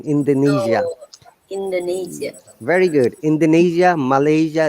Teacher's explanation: this s sounds like zed in indonesia